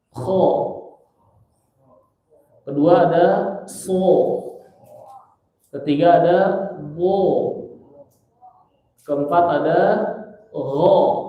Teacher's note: Jadi huruf hijaiyah yang dibaca o semua, ya, itu tebal. Kecuali ro. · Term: huruf tebal